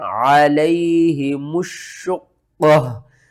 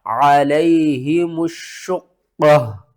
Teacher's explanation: قاف کے اوپر ہم نے قلقلہ کرنا ہے، قاف کو موٹا پڑھنا ہے، قاف کو 2 بار پڑھنا ہے، شین کو 2 بار پڑھنا ہے، سختی کے ساتھ پڑھنا ہے، اس سے پہلے الف اور لام اس کو بھی آپ نے چھوڑ دینا ہے۔